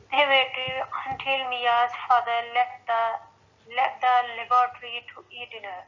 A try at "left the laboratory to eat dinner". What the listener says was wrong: Left the यानी इसमें हमने left बोल के दा बोल दी. Left the laboratory to eat dinner. So left the laboratory to eat dinner.